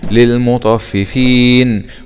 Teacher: نقف عليها مد عارض للسكون